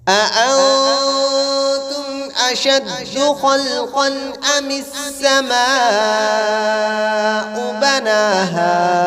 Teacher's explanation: اس مد کو 4 الف کی مقدار کھینچ کر پڑھیں گے